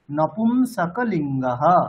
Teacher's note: কয়ের পরেও যে অকার আছে সেটাকে স্পষ্ট উচ্চারণ করতে হবে, নপুংসকলিঙ্গহ।